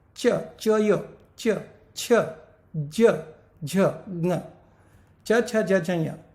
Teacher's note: दांतों के बिल्कुल पीछे, ऊपर तालु को जीभ लगती है। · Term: तालव्य